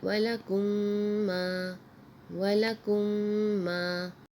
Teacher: اگلا لفظ ہے وَلَكُمْ مَا، وَلَكُمْ مَا، میم یعنی الف خالی سے پہلے زبر ہے تو یہ الف مدہ ہے، اس کو ایک الف کے برابر کھینچ کے بھی پڑھیں گے۔ میم میم کو جب ملائیں گے تو یہاں غنہ ہوگا